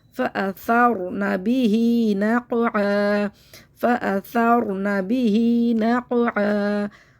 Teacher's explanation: कौफ को मोटा पढ़ते हैं, आइन को हलक से निकाल कर